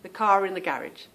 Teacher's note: we do pronounce the r when there is a vowel that follows